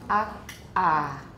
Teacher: You should have produced something like ak-ah. We're putting an extra glottal stop in.